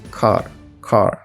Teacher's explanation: é quando o irlandês ele vai pronunciar o R de uma forma um pouco mais forte e marcada, para que o R ele seja bem reconhecido nas palavras. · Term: R forte